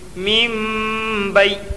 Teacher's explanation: نون ساکن کے بعد با آیا اس لیے نون کو میم سے بدل کر غنہ اور اخفا کے ساتھ پڑھیں گے